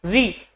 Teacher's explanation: इसके बाद में री, तो री का उच्चारण जीभ के आगे वाले भाग से हुआ तो री आपका कौन सा हो जाएगा, अग्रस्वर।